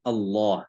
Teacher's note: tebalkan huruf lam pada lafzul jalalah Allah kalau sebelumnya ada lafaz berharakat fathah